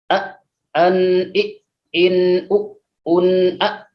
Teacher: Hati-hati ketika mengucapkan di sini tanwin, nggak boleh didengungkan.